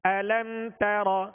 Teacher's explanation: را کو پر کرتے ہوئے کہیں تا پر نہ ہو جائے، تا کو باریک پڑھیں گے۔ أَلَمْ تَرَ، علم شروع میں حمزہ ہے، حمزہ کی سختی ہوگی اور اس کی زبر ادا کرتے ہوئے منہ اور آواز دونوں کھول کر پڑھیں گے.